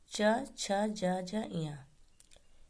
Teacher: इन वर्णों का उच्चारण करते समय ये तालु को स्पर्श करते हुए निकलती है, इसलिए इसे तालव्य वर्ग कहते हैं।